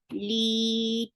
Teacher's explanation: Li, 2 counts long because this is mad tabi'i.